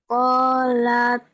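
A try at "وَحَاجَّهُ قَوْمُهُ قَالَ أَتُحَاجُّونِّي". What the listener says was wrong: Ada A-nya. Sebentar, sebentar. Qala atuha. Ada A-nya. Coba lagi.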